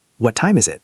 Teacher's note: Say, What time is it? with falling tone.